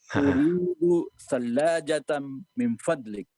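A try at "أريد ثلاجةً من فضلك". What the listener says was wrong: Mumtaz. Hakala.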